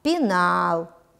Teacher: безударный гласный е а ударный второй слог ударение падает на гласный а